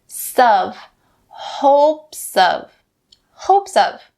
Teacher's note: The first one, in hopes of, you can bring that s over to of and say sov